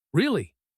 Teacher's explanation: short sharp loud this means anger or frustration